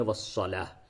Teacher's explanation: یہ ہا کے شکل کی جو تا ہے، اس پہ جب بھی آپ وہ وقف کریں تو یہ حالت وقف میں تا ہا سے بدل جاتی ہے، اسی وجہ سے اس کو ہا کے شکل میں ہی لکھتے ہیں. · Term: مؤنث کی تا